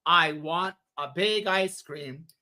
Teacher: you stress big to show size is important